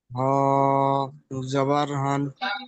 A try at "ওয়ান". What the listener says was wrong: হ নয়, ও। ও ও দুজাবার ওয়ান। ওয়ান ওয়ান।